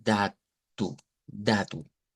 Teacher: La O que está al final va a sonar como una U